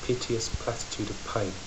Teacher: these plosives spitting out what she's saying adding to that feeling of scorn